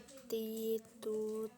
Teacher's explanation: tak ada udara yang mengalir ketika melafalkan huruf tersebut